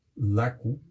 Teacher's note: un sonido único en el mundo que es la L interdental